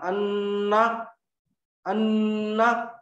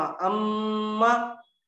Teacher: नाक में जो आवाज हमारे रह रही है ना, अंदर से जो गूंज रही आवाज, उसको बोलते हैं गुन्ना